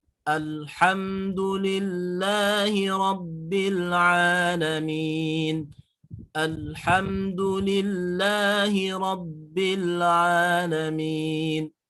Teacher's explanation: ketika dalam cara pengucapan huruf lam terus ke depannya ada ha, itu tidak boleh ada pantulan karena memang si huruf lam sendiri tidak memiliki sifat yang bernama sifat qalqalah. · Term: idhar al